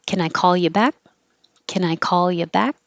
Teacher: this is a good example of the can changing to kin because you put the emphasis on the verb